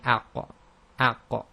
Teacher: And the same if you say aqqa, aqqa. The back of the tongue is raised, but the front of the tongue is down. So they're heavy in terms of the elevation of the back of the tongue, but it's not full closure of, or near closure of the mouth.